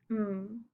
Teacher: The consonant M um, is a little bit different because the lips are closed for bilabial closure, which sends the air out the nasal cavity as the uveal flap opens the nasal cavity or the velum and allows that airflow. The oral tract, formant 3, is completely closed off, like I said, because of the bilabial closure by the lips, and it creates dampening because the the creation of antiformants, which are then damped by the nasal cavity, lowering the overall sound of the output.